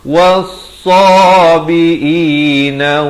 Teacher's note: alif lam syamsiah, lam tidak dibunyikan